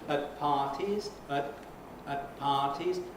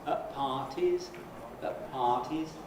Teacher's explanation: you can have either a T or a glottal stop